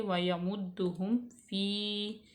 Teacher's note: دال مشدد ہے، اس کو جما کے پڑھیں گے